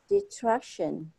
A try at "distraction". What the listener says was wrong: Yeah, you want to say the S on this distraction.